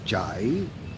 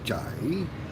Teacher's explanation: Kind of with a rising tone, jai.